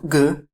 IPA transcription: g